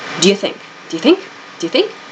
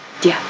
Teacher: So this do you becomes dia.